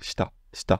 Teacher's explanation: shita va être prononcé avec un dévoisement, donc ça va être shita.